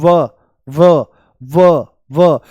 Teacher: दंत ओष्ठय दांत और होठ दोनों से इसका उच्चारण होता है जैसे बोल दो व व व तो जो ऊपर वाले दांत हैं ये होठों से मिल जाते हैं आप बोल के देखो आप बोल के देखो आपको तुरंत पता लगेगा इसमें दंत ओष्ठ हैं यह तो इसके उच्चारण में जो दांत हैं इसके उच्चारण में जो दांत हैं। · और व जो है हमारा इसका उच्चारण होता है दंत ओष्ठ है ना दांत ये दंत ओष्ठ है दंत ओष्ठय दांत और होठ दोनों से इसका उच्चारण होता है जैसे बोल दो व व व तो जो ऊपर वाले दांत हैं ये होठों से मिल जाते हैं · जैसे बोल दो व व व व, तो जो ऊपर वाले दांत हैं ये होठों से मिल जाते हैं। · इसके उच्चारण में दांत होठों को स्पर्श करते हैं